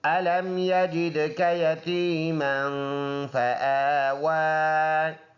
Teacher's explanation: میم پر دو زبر ہے، ناک میں آواز لے کے جائیں گے